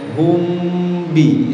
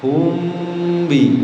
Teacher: mengghunahkan huruf mim dengan tempo yang dipanjangkan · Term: Ikhfa Syafawi